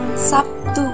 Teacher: kata Sabtu dalam bahasa Indonesia lazim diucapkan Sabtu dengan P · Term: asimilasi fonetis